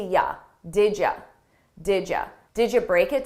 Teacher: I combine those sounds together and I take you and I change it to ya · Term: didja